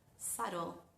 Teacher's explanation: La palabra subtle es una palabra bastante especial donde el sonido ba no se pronuncia, no se articula. Subtle. Fíjense que mis labios nunca se juntan.